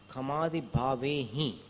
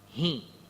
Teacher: अब देखिए, खमादि भावे ही, ये इसका जो उच्चारण है हिम नहीं है, ही। सिर्फ नाक से थोड़ी ध्वनि निकलेगी, हिम ऐसे होठ मिला करके म नहीं बोलने का। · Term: अनुस्वार